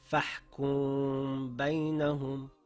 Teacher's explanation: If after a meem sakin, there appears the letter ba, ikhfa will take place. This means it is pronounced with a light nasal sound in the nose for two counts, keeping the lips slightly open. The sound of the meem is hidden and the lips are shaped, ready to pronounce the ba.